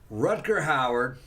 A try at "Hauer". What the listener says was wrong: It's not Howard. H-A-U-E-R. No, you said Howard. With a D at the end. Yeah, you did.